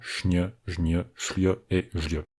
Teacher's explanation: Les groupes sn, zn, sl, zl suivis d'un j, donnent respectivement šň, žň, šľ et žľ. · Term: yodisation